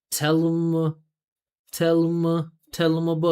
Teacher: It's 3 syllables right there, and then ow in about is going to get the attention.